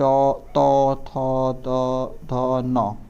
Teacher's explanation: दंत से इसका उच्चारण करते हैं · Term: दंत्य